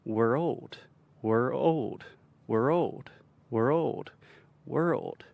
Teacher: you can even add a stress to the second syllable